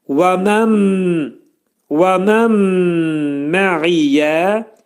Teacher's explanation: Burada və mən mə'iyyədə nun hərfi mimə yetişir, idğam mə'al gunnə olur. Nun hərfi mimə çevrilir və burunda sıxılır.